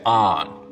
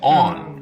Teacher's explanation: north of this line, most people say on, rhymes with don. South of it, they say on, rhymes with dawn. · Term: the on line